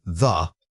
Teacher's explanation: Now say thee and you should definitely feel your throat vibrating with sound. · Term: voiced